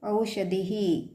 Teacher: ಧಿ ಮುಂದೆ ಅಹ ಪ್ರನೌನ್ಸ್ ಮಾಡ್ತೇವಲ್ಲ ವಿಸರ್ಗ